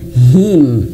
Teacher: Him bukan hem ya, bukan hem tapi him gitu ya. Jangan ke e tapi ke i gitu ya.